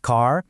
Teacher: In American English, you get that really hard R sound